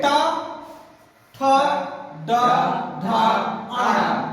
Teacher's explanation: ट वर्ग का उच्चारण स्थान मूर्धा है।